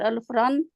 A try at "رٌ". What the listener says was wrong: الف نہیں ہے،